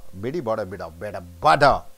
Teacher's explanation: So, all the T's are converted into D. See, when you say T, when you say D, when you say N, it all, the tongue, tip of the tongue goes above the upper teeth, right?